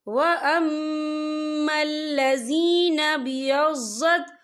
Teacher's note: یہاں میم مشدد ہے تو یہاں پر غنہ ہوگا